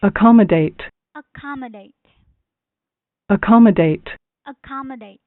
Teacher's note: So the stress is on second syllable, which is ka.